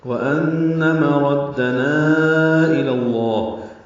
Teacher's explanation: جیسے انما تدعوننی، یہ نی پہ مد منفصل پڑی تھی، ابھی نا پہ مد منفصل ہے. وَأَنَّ مَرَدَّنَا إِلَى اللَّهِ، نا کو چار حرکات لمبا کیا